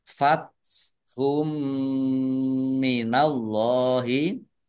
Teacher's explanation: Dhammah tanwin bertemu dengan huruf mim, idgham bi gunah masuk dengan mendengung, yaitu mendengung mim ditandai mimnya ada tasdidnya.